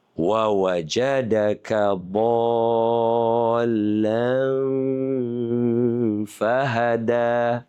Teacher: Oh, ada ikhfa hakiki. Sembunyikan nun beserta dengung